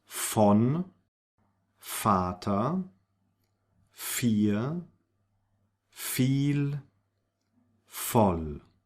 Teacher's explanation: words where we have the V, which is pronounced like an F